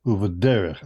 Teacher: I emphasize this syllable, the next to the last one. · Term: segolet noun